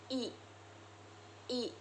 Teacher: Huruf I dibentuk dengan lidah yang berada di posisi tinggi dan di depan, serta bibir yang tersenyum. Contohnya, I.